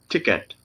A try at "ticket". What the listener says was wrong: Well, just make that last syllable faster. Ticket. But even just a little faster still. Ticket.